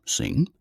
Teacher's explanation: the second N as in sing occurs immediately before G or C similar to English